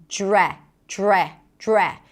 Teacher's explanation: Now, to pronounce this phrasal verb, you start with a DR, and then when you connect the DR, you hear a J sound.